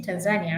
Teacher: so your stress is at the end